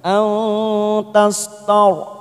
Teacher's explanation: ro sukun didahului fathah, kita baca tafkim